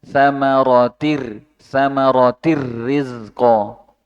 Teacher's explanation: Nunnya itu dihilangkan, masuk langsung ke ro-nya. Samaratir rizqa. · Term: idgham bila guna